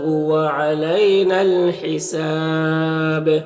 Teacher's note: نون سے، یہ الف مدہ کو بھی نہیں پڑھا جائے گا، اور حساب میں وقف کی صورت میں مد عارض وقفی ہوگا، با میں قلقلہ ہوگا